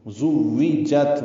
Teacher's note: زُوِّجَت، واو میں ہونٹ نا تمام گول ہوتے ہیں یعنی آگے لاتے ہیں، جت میں تا ساکن ہے اور اس پہ ہمس ہے